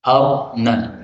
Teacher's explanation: Arina boleh dibaca arna, ra-nya disukun. Boleh juga dibaca ikhtilas, yaitu dibaca ra kasrah tapi sedikit.